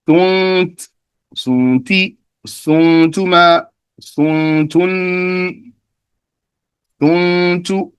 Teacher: I'm applying غُنَّة. I'm doing إخفاء, hiding the noon and making a غُنَّة